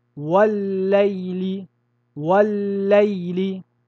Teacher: Le premier lemme a été fusionné dans le deuxième et le deuxième a pris une shedda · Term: idgham